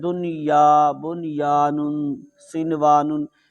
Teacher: تو یہ چاہے حروف یرملون میں سے ہیں لیکن یہاں ادغام نہیں ہوگا، اظہار ہوگا وہاں بھی، لیکن اس کو اظہار مطلق کہتے ہیں